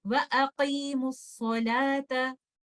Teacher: اس example میں واو مد کو ڈراپ کر دوں گی اور میں اس کو ڈراپ کر کے میم کو صاد کے ساتھ ملا دوں گی